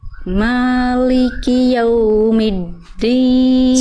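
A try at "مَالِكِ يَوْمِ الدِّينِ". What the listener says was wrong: Sekali lagi, jelaskan dulu ya-nya. Betul dibaca lembut tapi ya-nya tetap jelas ya. Jangan jadi yau. Maliki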